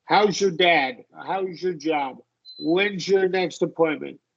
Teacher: a lot of native speakers will say your. They'll reduce it to a schwa R.